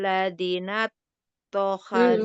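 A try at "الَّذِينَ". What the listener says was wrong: Ladzinya panjang.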